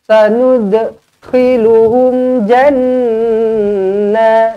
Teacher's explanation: والذين آمنوا وعملوا alif lam syamsiyah di sini wa'amilus bukan wa'amilul salah, wa'amilus ada sabdu ni terus masukkan dia, wa'amilus solihati sanud qalqalah sughra lantunkan, sanudkhiluhum jannah, nun yang bertanda sabdu wajibul gunnah dengan 2 harakat